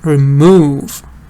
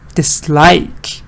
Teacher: But in verbs, it's the da. Stress goes on the second part.